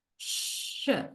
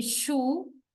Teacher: Alveolar palatal. Here, the front or blade of the tongue is raised to an area between the alveolar ridge and the palate